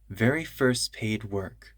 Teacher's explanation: This T in first can disappear.